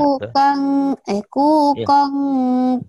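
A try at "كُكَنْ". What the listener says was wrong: kukong. Jangan kukong. Kukang, kukang. Kukang.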